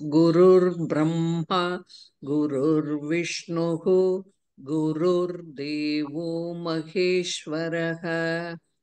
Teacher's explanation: that visarga should be pronounced.